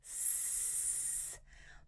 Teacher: when I make that sound, I put the tip of my tongue to the top of my upper teeth, just behind them. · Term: whisper sound